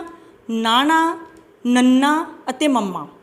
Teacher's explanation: ਜਦੋਂ ਅਸੀਂ ਇਹਨਾਂ ਧੁਨੀਆਂ ਦਾ ਉਚਾਰਨ ਕਰਦੇ ਹਾਂ ਤਾਂ ਆਵਾਜ਼ ਸਾਡੇ ਨੱਕ ਵਿੱਚੋਂ ਨਿਕਲਦੀ ਆ। ਇਹਨਾਂ ਧੁਨੀਆਂ ਦੇ ਉਚਾਰਨ ਸਮੇਂ ਆਵਾਜ਼ ਦਾ ਕੁਝ ਭਾਗ ਨੱਕ ਵਿੱਚੋਂ ਨਿਕਲਦਾ ਹੈ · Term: ਨਾਸਕੀ ਜਾਂ ਅਨੁਨਾਸਕੀ